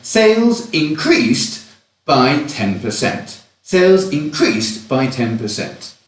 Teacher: in this context increase is a verb and therefore we stress the second syllable